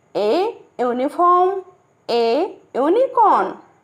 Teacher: because uniform and unicorn begin with a y-u consonant sound